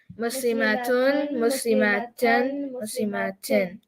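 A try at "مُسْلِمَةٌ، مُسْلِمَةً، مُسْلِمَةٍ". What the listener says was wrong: Okay. The ma part is still too long. I don't like it.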